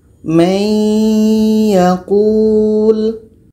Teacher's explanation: Jadi cara bacanya bunyi nun ini kita masukkan kepada bunyi ya. Menjadi bacanya may yaqul. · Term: idgham bi gunnah